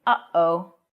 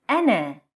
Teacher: commonly known as hamza which is basically a glottal stop like the uh sound in uh-oh